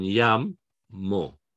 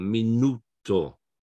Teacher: It's the next to last one, minuto. The stress is on the next to last syllable.